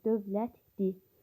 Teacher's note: Dövlətli sözündə isə ikinci L samiti D-yə keçir.